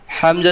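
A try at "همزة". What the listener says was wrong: হামজা না, হামজা, হামজা, হা গোল হাতে দিকে। হামজা, ঠিক আছে, হামজা এটা লম্বা হা, এটা এটা গোল হা থেকে হবে, হামজা, হামজা।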